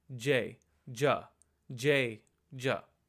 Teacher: the letter Jah is also not aspirated so you use minimal force when you say it